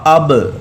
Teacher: حمزہ زبر با اب، اس میں کلکلہ بھی ہوگا، اس وجہ سے آواز واپس لوٹتی ہوئی محسوس ہوگی۔ اب دیکھیں اوپر اور نیچے ہونٹوں کا جو تر حصہ ہے وہ آپس میں ملے گا۔